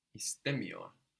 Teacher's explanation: I'm putting a strong accent before the m